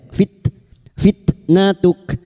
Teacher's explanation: tak sukun yang memiliki sifat hames dan sidah